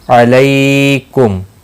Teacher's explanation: لئی یالین ہے، تھوڑا نرمی کے ساتھ کھینچ کر ادا کریں گے، اور وقف کی صورت میں میم ساکن پڑھا جائے گا، ملانے کی صورت میں اظہار شفوی ہوگا۔